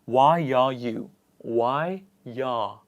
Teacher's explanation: this is called vowel to vowel linking and the sound that it produces is the year sound